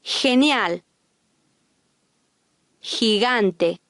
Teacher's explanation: When followed by an E or I, the Spanish G sounds like a Spanish J with a hissing English H sound.